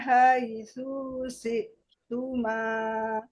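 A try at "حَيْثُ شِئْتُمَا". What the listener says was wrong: Haitsu syi'tuma atau haitsu syi'tuma. Haitsu syi'. Nah, tunya pendek.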